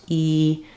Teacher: called a high front V fowel because it happens with uh the resonance is in the front of my mouth my tongue is high my jaws closed e it's high and in the front of the shape of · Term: high front vowel